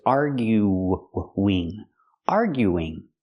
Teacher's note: When I make it continuous with ing, we need an extra sound. We need the ww sound to link the vowels.